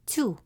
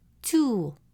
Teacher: Add waw and it becomes tu, a longer version of the same sound.